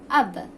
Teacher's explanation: during the pronunciation of letter sound is stopped at 2 lips